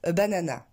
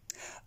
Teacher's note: il n'y a aucune syllabe qui ressort. Banana, banana, on est sur le même rythme.